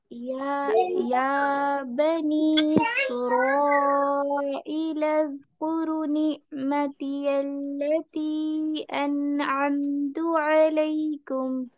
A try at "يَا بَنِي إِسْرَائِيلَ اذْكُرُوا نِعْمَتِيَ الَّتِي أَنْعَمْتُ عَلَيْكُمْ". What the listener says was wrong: اچھا آپ مدود کو ڈراپ کر رہی ہیں, یا کو بہت زیادہ کھینچ رہی ہیں. یا بنی اسرائیل اذکروا نعمتی التی.